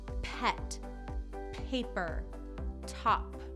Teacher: p is where you push your lips together and then blow it out and it's very sharp